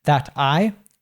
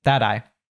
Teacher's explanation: That I, we have an American T there. When we have a T in American English between two vowel sounds. So here between A and an I, it usually changes to a D sound. So instead of being That I, it's Thad- I.